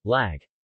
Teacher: similar to English 'l' in lean, but with the tip of the tongue against the top teeth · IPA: [l]